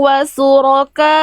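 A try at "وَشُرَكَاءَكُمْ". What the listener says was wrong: Ini huruf shin, Bunda baca jadi sin, bukan wasuroka. Wasyuroka, Bunda baca wasuroka. Itu salah besar, ya.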